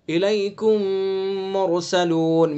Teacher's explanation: میم کا میم میں ادغام کیا گیا، میم ساکن کے بعد دوسرا میم، تو یہاں ادغام مثلین۔